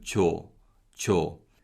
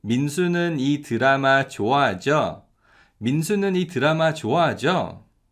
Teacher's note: And this 지요 is often shortened to 조, 조. And when we ask this question naturally, 조 is pronounced more like 저.